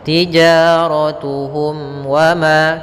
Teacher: ada mim mati bertemu waw, kita namakan dengan izhar syafawi, yaitu bacaan yang dibaca dengan jelas mimnya